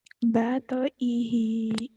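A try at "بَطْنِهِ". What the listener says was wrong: Botoihi. Pinter.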